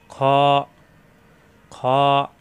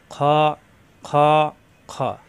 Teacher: খ, কণ্ঠনালীর শেষ অংশ থেকে উচ্চারণ